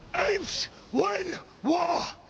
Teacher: with Koba, it's very much a guttural thing to get the words out